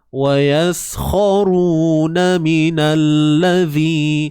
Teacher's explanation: keluarkan hujung lidah kita sikit sahaja dan panjangkan dua harakat